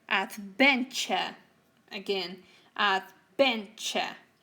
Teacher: So we have 3 syllables, but the one in the middle is the one that is stressed.